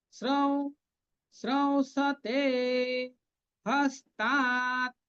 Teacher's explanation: উ হস্য চন্দ্রবিন্দু ওয়াও, সেই সানুনাসিক ওয়াও উচ্চারণটা হবে